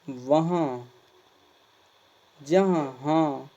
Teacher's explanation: चंद्र बिंदु के उच्चारण में मुंह से अधिक तथा नाक से कम सांस निकलती है